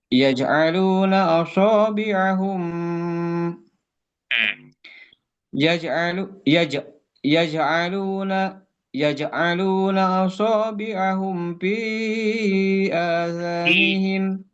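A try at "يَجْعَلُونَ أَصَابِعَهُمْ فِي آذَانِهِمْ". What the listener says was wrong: P-nya jadi kebaca P ya. Fi.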